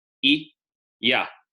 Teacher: You don't have to move your vocal tract. It all happens in the same palatal position.